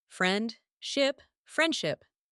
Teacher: The D sound is dropped